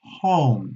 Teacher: es una jota española muy suave es la parte de atrás de la lengua · el sonido H, que no tiene pareja sonora, es una J española muy suave. Es la parte de atrás de la lengua, presiona la glotis, como la J, no os preocupéis.